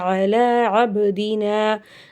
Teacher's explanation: அபுதினால பா சுக்கூன் கல்கலாவுடைய எழுத்து அசைச்சு உச்சரித்து ஓதணும்